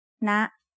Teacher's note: High tone starts at a high pitch and Rises very slightly